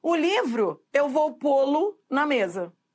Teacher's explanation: Porque a primeira é um monossílabo tônico e a segunda é um monossílabo átono. A segunda palavra aí, do polo, é tão monossílabo átono que se você colocar numa frase, você vai ver que esse lo vira lu.